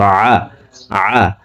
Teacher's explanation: আইন হরফকে হলকের মধ্যখান থেকে উচ্চারণ করতে হবে